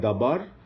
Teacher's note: the second syllable bar contains the accent so it's a closed accented syllable